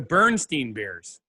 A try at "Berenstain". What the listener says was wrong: The Beren, B-E-R-E-N, Bernstein. It's not Steen. It's not Steen. It's Stain. It's not an E. It's spelled with a A.